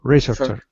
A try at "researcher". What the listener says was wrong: Researcher. Not researcher. First syllable again. I can't think of an example where it's on the second syllable. I think it's always on the first syllable for research.